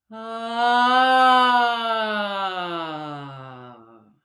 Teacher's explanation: Okay, so now I'm just going to extend that exploration of the voiced sigh a little bit further. So I'm going to begin the sigh, but I'm going to pulse and give a little more energy. So I'm actually going to hear the pitch rise a little bit before it falls off.